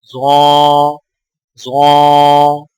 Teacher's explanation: ظا کی ادائیگی میں زبان کی نوک کو سامنے والے اوپر کے 2 دانتوں کے اندرونی کناروں سے نرمی سے لگا کر اور زبان کے پچھلے حصے کو تالو کی طرف بلند کرتے ہوئے موٹی آواز میں پڑھیں